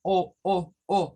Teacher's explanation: indica que esa o no es una oh oh oh así no es una o redonda es una o que apunta a una o en forma de a